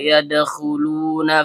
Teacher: Dal ujung lidah bertemu dengan pangkal gigi seri atas. Karena dalnya sukun dan berada di antara dua huruf hidup, maka hukum bacaannya qalqalah sugroh. Bunyi pantulannya kecil.